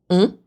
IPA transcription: ɔ̃